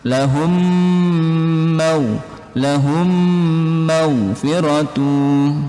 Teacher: Nah, ini idgham mimi teman-teman, didengungkan, dirapatkan bibirnya.